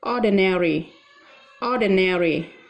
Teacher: Ordinary, từ này được phiên âm là ordinary. Tuy nhiên cái từ mà nó có cái đuôi RI thì người Mỹ đã đọc rõ cái đuôi RI này. Thì từ này chúng ta có thể đọc thành ordinary, ordinary, cho âm O, tính từ thông thường.